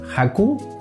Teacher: Es una especie de J pero aspirada.